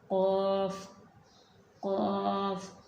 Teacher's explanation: जब ज़ुबान की जड़ कवे के साथ मिलती है तो उस वक़्त क़ाफ़ अदा होता है